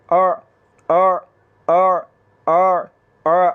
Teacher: अगर झटके के साथ पढ़ेंगे तो फिर हमज़ा पढ़ा जाएगा, और इसी तरह अगर हलक के नीचे वाले हिस्से से पढ़ेंगे फिर भी हमज़ा पढ़ा जाएगा। तो हलक के दरमियान वाले हिस्से से आवाज़ को निकालते हुए बग़ैर झटके के आपने पढ़ना है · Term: आइन